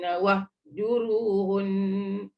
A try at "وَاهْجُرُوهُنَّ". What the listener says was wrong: Dia jangan tekan wah. Wahju. Wah.